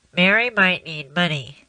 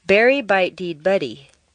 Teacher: The first will be quite nasal. The second will sound like you have a cold. · We're going to practice totally dnasalizing your voice for a moment, which means turning the nasals into the other consonants